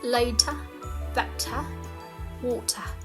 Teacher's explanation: in British English, I can tell that people don't really curl their tongue very much when they pronounce the R sound